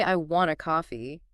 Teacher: When you say, I want a coffee, with the emphasis on coffee, you're highlighting the thing you want.